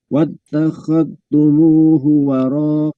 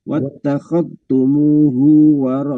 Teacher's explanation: Nah, hati-hati setelah tumu 2 rokat, hunya jangan ketarik jadi 2 rokat, tapi 1 harokat